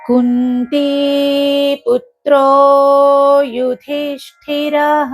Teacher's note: తర్వాత యుధిష్ఠిరలో ధీ అనేది మహాప్రాణము, ష్ఠి అనేది మహాప్రాణము కాబట్టి వాటిని గట్టిగా ఒత్తి పలకాలి